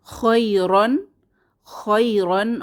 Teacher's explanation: শেষে খালি আলিফ এটা উচ্চারণে আসবে না